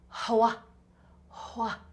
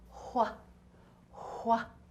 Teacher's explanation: It kind of sounds like it has a little bit of a H in front when we say it, but actually the H is right after the W.